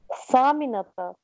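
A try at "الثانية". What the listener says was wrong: सानिया नून या था. आप सामिना कह रही है, सामिना 8 बजे होता है. दोबारा पढ़ें.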